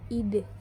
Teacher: bunyi e Tengah atas depan tak bundar apabila berada pada silabel terbuka